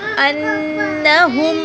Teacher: یظنون، نون پہ غنہ کر کے تھوڑا سا لمبا کریں گے کیونکہ پیش کے بعد واو ہے. انہم، نون پہ غنہ کریں گے، نون کے اوپر شد ہے